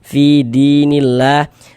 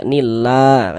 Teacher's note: Kalau ada lafaz Allah sebelah sininya ada tanda baca kasroh ini, harokat kasroh, maka lafaz Allah huruf lam jalalahnya dibaca tipis, dibaca tarkik, sehingga dibaca nillah kayak gitu